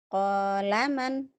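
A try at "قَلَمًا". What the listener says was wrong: Ada yang panjang deh kayaknya. Kolaman.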